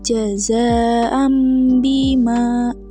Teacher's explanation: Selanjutnya ada iqlab, yaitu mengganti yang berarti apabila nun sakinah ataupun tanwin diikuti oleh huruf iqlab yakni ba, maka bunyi nun berubah menjadi mim dan dibaca dengan dengung ataupun gunah